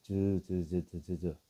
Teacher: 즈를 시작할 때요. 입술이 살짝 닫혔다가 열리면서 어떻게 돼요? 쓸리는 소리가 들려요. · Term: 파찰음